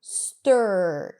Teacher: So you don't really hear a vowel sound and the R takes over the sound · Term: R vowel